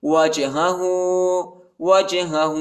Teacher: بلا من اسلم من اسلم من اسلم وجہہ وجہہ، وہ کو جیم کے ساتھ ملائیں گے اور دوسرے ہا پر الٹا پیش آیا ہے، اس کو ایک الف کے مقدار تک کھینچیں گے